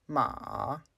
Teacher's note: The third is a dropping and rising tone, ma. Or you can just use a mid sustained tone, ma.